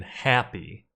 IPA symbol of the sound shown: æ